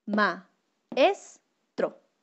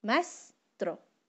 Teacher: Como la vocal A y la vocal E son fuertes, se pelean entre ellas por el sonido. Entonces, se va a perder el sonido de una de las vocales, en este caso es de la E. Cuando yo digo maestro, ¿ven que se pierde el sonido de la E?